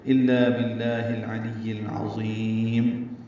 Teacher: عین وسط حلق سے ادا کریں گے، لام کو یا سے ملائیں گے، یا کو العظیم کے لام سے ملا دیں گے. · عین وسط حلق سے ادا ہوگا، اللہ پر پڑھیں گے اور اس کو لمبا کریں گے. میم پہ ہونٹ بند کر لیں گے، اظہار شفوی ہوگا